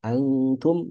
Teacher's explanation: Antum ini ikhfa dibaca tiga harakat. E tiga harkat ya, tiga ketukan.